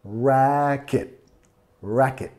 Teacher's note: Racket, enfatizando la primera sílaba. Racket. Racket.